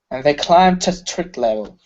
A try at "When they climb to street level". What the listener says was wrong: Okay, less pressure on the T's. Climb to. When they climb to street level.